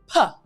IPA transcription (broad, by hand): p